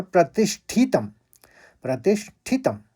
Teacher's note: प्रतिष्ठितम दोनों हस्व बोले जाएंगे यानी छोटी इ की मात्रा है तो जल्दी बोला जाएगा